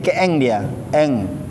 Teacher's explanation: disamarkan dua harokat disamarkan plus ada dengungnya itu ya karena nanti bunyi suara itu keluarnya dari hidung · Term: ikhfa